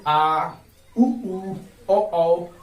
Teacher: जिन स्वरों के उच्चारण में जीभ का पीछे का भाग काम करता है उसे क्या कहेंगे, हम पश्च स्वर कहेंगे।